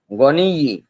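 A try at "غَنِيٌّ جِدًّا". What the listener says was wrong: গনিয়্যুন, গনিয়্যুন গনিয়্যি হবে না, গনিয়্যুন জিদ্দান, জিদ্দান।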